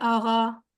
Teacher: ایرانی جب قاف کو کہتے ہیں اسے کہتے ہیں آغا، کیونکہ وہ قاف اور غین کی آواز کو ملا دیتے، کیونکہ وہ دونوں ساؤنڈ بہت کلوز ہیں ایک دوسرے سے، بہت قریب ایک دوسرے کے ہیں.